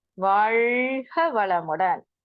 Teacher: வாழ்க வளமுடன் அப்படின்னு சொல்லும்போது அந்த நாக்கு நுனி நாக்கு மேல் அன்னத்தை தொடும்